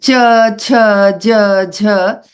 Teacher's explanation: The tongue touches the palate while saying ch, ch, j.